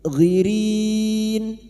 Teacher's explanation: bertemunya mad dengan huruf hidup yang dibaca wakaf mad arid al sukun empat harakat kita panjangkan